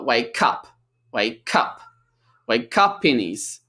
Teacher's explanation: we have a phrasal verb. Stress is on up, the action.